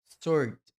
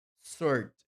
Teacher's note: É como se fosse apenas um O. Sword. Não tem o W na pronúncia